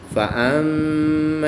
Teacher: میم مشدد میں غنہ کر کے پڑھیں گے۔ عین کی ادائیگی کا خاص خیال کریں گے۔